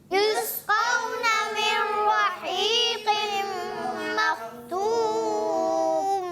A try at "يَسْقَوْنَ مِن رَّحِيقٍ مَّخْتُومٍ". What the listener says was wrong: یہاں نون کی ادائیگی نہیں ہوگی، نون را میں مل گیا تو یہاں نون کی آواز نہیں آئے گی، تو ہم پڑھیں گے من رحیق مختوم